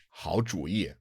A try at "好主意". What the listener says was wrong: No, the second character is second tone. Yeah, it is a third tone when it's used in certain character, but when it means 好主意, like idea, it is the second tone because it's after 好. It's not the first character of a phrase.